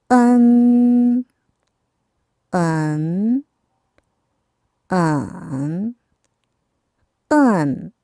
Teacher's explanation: 으가 굉장히 짧아요. 그리고 언으로 빨리 넘어가야 돼요. 그렇다고 너무 언은 아니라는 거.